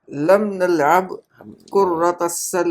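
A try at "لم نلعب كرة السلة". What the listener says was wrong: कुर्रा नहीं, कोरा, रा के ऊपर शद्दा नहीं पढ़ेंगे हम, बगैर शद्दे के, कोरा तसल्लती।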